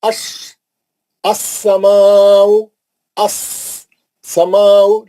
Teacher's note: लाम है ना, वो नहीं पढ़े जा रहा लाम, शमसी रहने से, लेकिन लाम है इसीलिए अलिफ पे जबर आएगा, अस्समाउ।